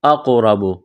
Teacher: اقرب قاف کو موٹا کرنا ہے، قلقلہ کریں گے قاف پر، را کو موٹا کرنا ہے، را کے اوپر زبر ہے